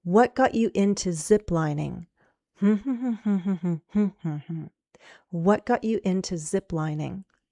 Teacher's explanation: ziplining is still the focus word and we're going down. First we rise a little and then fall.